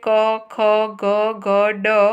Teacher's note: वो कंठ है यानी कि हमारे गले से ही निकलता है